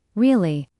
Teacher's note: when they are surprised, their voice goes up